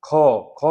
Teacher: देखिए ख में क्या हो रहा है, ज्यादा वायु निकल रही है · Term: महाप्राण